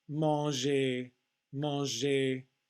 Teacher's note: The N is part of a nasal vowel sound, and the G is a soft sound, not the G, but the softer J.